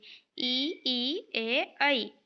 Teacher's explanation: इनके उच्चारण में होठों की आकृति अवृत्ताकार होती है, मतलब गोल नहीं होती है। ठीक है, ई ए ऐ, इसमें गोल नहीं होती है।